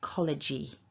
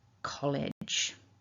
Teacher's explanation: there's no vowel sound at the end of this word. So we don't want to say collegey. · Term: J sound